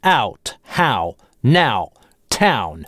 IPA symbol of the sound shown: aʊ